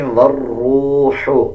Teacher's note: واو کو را کے ساتھ ملا کے پڑھا جائے گا اور واو کے بعد جو الف اور لام ہے ان دونوں کو سکپ کر دیا جائے گا، واو را زبر ور پڑھا جائے گا۔